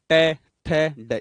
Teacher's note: ऊपर जो है अपने तालवे पे उसके टच होती है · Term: मूर्धन्य